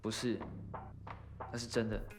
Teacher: the tongue position for Taiwanese accented sh, ch, ch is obviously lower